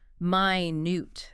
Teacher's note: Stress on the second syllable minute. That's the adjective meaning very very small tiny.